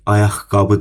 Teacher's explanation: ayaqqabı sözündə də birinci q x-ya çevrilir